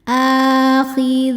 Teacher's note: Akhidzina dzi hukumnya adalah mad thobi'i zohiri. Sebab ada ya sukun sebelumnya kasrah. Cara bacanya panjang dua harakat.